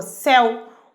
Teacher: Percebam que o E é mais forte que o O. Céu. O E é mais forte que o vogal, semivogal, ditongo decrescente.